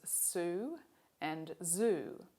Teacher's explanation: English also has voiced and voiceless alveolar fricatives, as in the words sue and zoo. Here we bring the tip or the blade of the tongue very close to the alveolar ridge, and the symbols for these are the letters S and Z.